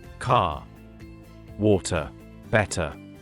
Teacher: in British accent, we usually don't pronounce the R sound strongly